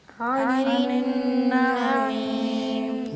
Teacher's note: عین یہاں پہ غنہ ہے نا نون کے اوپر، اس کو تھوڑا لمبا عن کھینچنا ہے